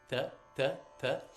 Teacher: same T we have an English it's not t it's th it's a more Dental T so your tongue is kind of pressing forward against your top front teeth